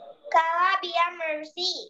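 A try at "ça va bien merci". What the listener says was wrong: pronunciation is not Kava. Pronunciation is Sava. Sava Bia Mercy. Keep the pronunciation of Sava in mind. It is not Kava. Pronunciation is Sava.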